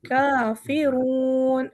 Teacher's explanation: रा हमारा मोटा है और रून काफ़ी लंबा हो जाएगा